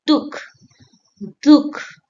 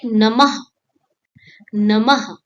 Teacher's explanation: The two small dots after the letter are called visarga. It adds a light, airy breathe, like a soft huh at the end